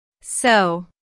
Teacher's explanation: notice how the O sound is drawn out here. combined with the intonation, which shows boredom.